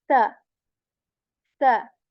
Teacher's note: the articulation points of these both are different the first letter tip of the tongue touches the tip of our upper teeth and this is a soft letter right there isn't any whistle sound in this letter because you know just tip of the tongue touches the tip